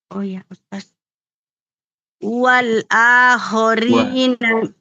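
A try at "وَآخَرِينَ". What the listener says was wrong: Tidak ada lam. Wa akhori.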